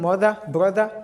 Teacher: so the stress will be found in the first syllable that's why the second syllable is unstress is unstressed and it has sound.